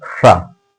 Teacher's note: बड़े सा को बोलने के लिए आप जो कि जीवा को कहां पर ले जाएंगे, तालु में जाकर टच करेंगे।